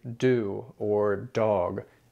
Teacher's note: In English, we say do or dog with kind of an explosive D sound. In Spanish, the D is much, much softer.